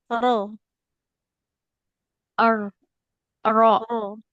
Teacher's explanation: Eh, huruf rnya ada getarnya. Enggak boleh mar, tapi mar ada getar.